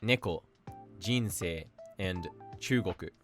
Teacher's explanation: The next one is called atamadaka, meaning head high, and the pitch drop is always after the first mora and stays low for the remainder of the word